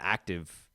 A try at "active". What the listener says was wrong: It felt like there was an extra syllable in active there. I felt like you said active.